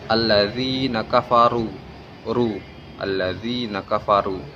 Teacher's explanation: Ru menjadi tafkhim karena berharkat dhammah.